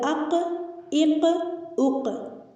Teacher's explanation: یہ گوشت کا ٹکڑا ہے جو زبان کے آخر میں حلق کے اختتام پر اوپر کے حصے میں ہے۔ قوف کا مخرج زبان کی جڑ جب کوے کے قریب سے نرم تالو سے لگے اس سے قوف ادا ہوتا ہے، یہ موٹا یعنی پر پڑھا جاتا ہے۔ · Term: موٹے قوف